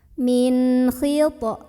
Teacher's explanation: Bunyinya masih bunyi asal, an, dan tidak perlu ditahan. Min khit. Di sini ada qalqalah sughra. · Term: idhar halqi